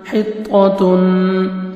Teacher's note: وقولو، حاضر طا جزم حط، طا زبر طا، حط، تا دو پیش نون، تن، حطتن، طا کو اپنے موٹا کر کے پڑھنا ہے، حط، آگے تا کو باریک پڑھیں گے، اور تنوین کے بعد نون ہے، ادغام کریں گے، نوز میں ساؤنڈ لے کے جائیں گے۔